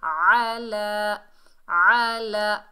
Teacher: زبر کو بغیر کھینچے پڑھیں گے، لام کو کھڑے زبر کو ایک الف کی مقدار کھینچ کر پڑھیں گے اور عین کو حلق کے درمیان سے ادا کریں گے، جیسے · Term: کھڑا زبر